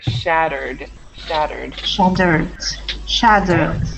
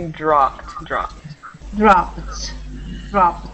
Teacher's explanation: you don't add an extra syllable